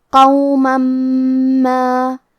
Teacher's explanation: کلمت قومن کے آخری میں میم پہ تنوین زبر ہے، پھر حرف المیم ہے کلمت ما، میم حروف الادغام بغنہ میں سے ہے تو ہم یہ حکم کو غنہ اور تشدید کے ساتھ ادا کریں گے۔ قوما ما، کلمت ما کے آخری میں الف پہ مد کا علامہ ہے، یہ مد جائز منفصل ہے، اور مد جائز منفصل کا معنی ہے کہ حرف المد پہلے کلمہ کے آخری میں ہو اور اس کی وجہ جو کہ حمزہ ہے وہ دوسرے کلمہ کے شروعات میں آئے۔